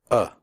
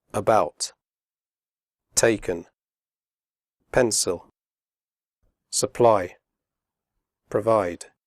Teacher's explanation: the sound is made with your mouth slightly open and relaxed and without moving your tongue it comes from the throat uh the schwa is often found in unstressed suffixes and prefixes